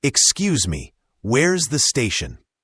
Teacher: The X sound is often like a X sound, and the me is quite short. Also, where is often blends together, almost sounding like where's